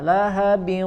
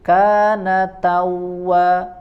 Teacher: Lahabin sama dileburkan ya, ditekan huruf wawunya. Tetapi di sini disertai dengan gunnah, lahabin. Ya, suara masuk ke rongga hidung. Tetapi kalau di surat An-Nasr di ayat terakhir kana tawwa, dia tidak disertai dengan dengung, tidak disertai dengan gunnah.